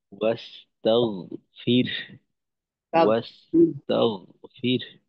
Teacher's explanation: গয়েনের মাখরাজ হলো হলকের শেষ থেকে, যেটা কিনা আমরা বাংলা গ যেখান থেকে উচ্চারণ করি এর থেকেও দুই ধাপ পিছনে